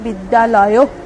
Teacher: দুটো আ মিলে একটা আ তে পরিণত হলো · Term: সন্ধি